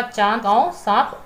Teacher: अनुनासिक, अनुनासिक का जो आपका चिन्ह होता है वह आपके चंद्र बिंदु के समान होता है। इसका उच्चारण मुख और नाक दोनों से होता है, जिसे अनुनासिक कहते हैं।